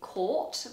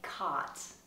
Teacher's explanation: going to look at is the aw vowel in British English this is a huge space inside the mouth the lips are rounded